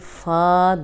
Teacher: فا 2 حرکات لمبا کریں گے۔